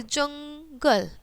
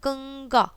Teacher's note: अंग को अनुस्वार भी कहते हैं इसका उच्चारण नाक से होता है